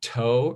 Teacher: If you say a word like toe or something, you realize that after the T, there's a big H. If you put your hand in front of you, toe, you feel a big puff of air.